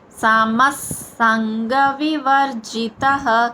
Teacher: సమస్ అక్కడ విసర్గుచ్చారణ స దంతవ్య స. మనం స అని పలికేటప్పుడు దంతాలతో పలుకుతాం చూడండి ఒకసారి.